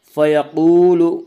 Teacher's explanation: فیقول واو مدہ، واو مدہ وہ واو جو ساکن ہو اور اس سے پہلے پیش ہو، واو مدہ کو ایک الف کے برابر کھینچ کر پڑھیں گے۔